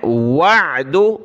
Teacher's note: عین کو گلے سے نکالنا ہے